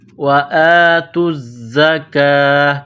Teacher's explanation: باریک کرنا ہے، زا کے ساتھ پلس کرنا ہے، وَآتُوا الزَّكَاةَ، زا میں سختی کرنی ہے، سیٹی کی آواز پیدا کرنا ہے